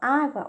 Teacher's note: na palavra água o som da vogal a é pronunciado com mais força do que a vogal u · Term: ditongo